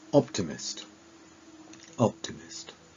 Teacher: It's on the 1st place, the 1st syllable. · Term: word stress